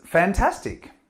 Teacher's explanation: you're using this intonation to rise and that acknowledges that you like the idea